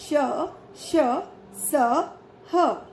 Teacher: इन व्यंजनों के उच्चारण के समय वायु मुख से रगड़ खाकर ऊष्मा पैदा करती है, यानी उच्चारण के समय मुख से गर्म हवा निकलती है। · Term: ऊष्म व्यंजन